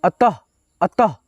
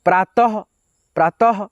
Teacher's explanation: जैसे कि देखिए यहाँ पे लिखा है अ, त में अह की मात्रा, तो इसको दोनों विसर्ग को हम लोग क्या पढ़ेंगे, ह पढ़ेंगे, वो भी आधा